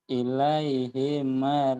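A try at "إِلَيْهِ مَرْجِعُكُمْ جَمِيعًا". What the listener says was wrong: I-nya pendek.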